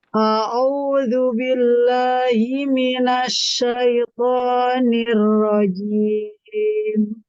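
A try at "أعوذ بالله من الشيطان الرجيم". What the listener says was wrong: Huruf ainnya dhammahnya sempurnakan dorong. Iya, sempurnakan tafashi. Himinash. Dorong tafashinya.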